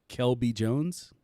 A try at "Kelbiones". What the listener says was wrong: Kelbiones. Biones. The silent J.